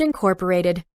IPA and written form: ɪnˈkɔːpəreɪtɪd (incorporated)